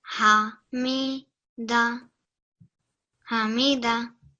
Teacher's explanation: tried really well to do that ha very clearly from the bottom of your throat